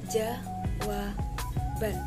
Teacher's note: Contoh lain, dalam proses pengimbuhan sufiks an pada jawab akan terjadi pergeseran letak bunyi B ke belakang membentuk suku kata baru, yang mana jawab menjadi ditambah sufiks an menjadi jawaban.